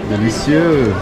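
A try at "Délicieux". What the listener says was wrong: Delicieux. Ah, biquinho tá errado.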